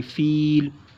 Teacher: वफ़ की वजह से यहाँ पर मद्दे आरिज़ होगा, इसलिए यहाँ पर इसको खींच के पढ़ना है